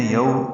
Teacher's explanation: یومئذ میں واو لین ہے، یو میم کو جلدی پڑھیں گے